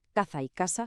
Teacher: la S suena como S, pero la Z y la C tienen un sonido interdental muy parecido al de la TH en la palabra inglesa think. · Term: la distinción